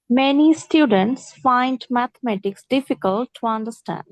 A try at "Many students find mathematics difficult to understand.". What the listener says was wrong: A sound, এটা a soundটা হবে না, হ্যাঁ? Many students.